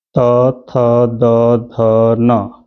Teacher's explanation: यह किससे उच्चरित होते हैं दंत से